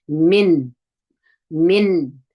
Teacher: نون اظهار کوو. مطلب دا دی چې نون مکمل وایو، غڼه نسته پکې کې